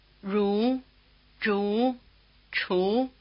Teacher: pronouncing each of the consonants with the tongue in this retroflex position.